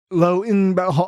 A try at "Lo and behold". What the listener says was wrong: You said you pronounced the N. You went Lo and Behold.